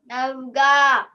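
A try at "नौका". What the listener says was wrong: It is ka. Nauka.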